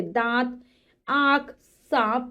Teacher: नाक और मुख दोनों से ही वायु निकलती है, बोलते हैं जब। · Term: अनुनासिक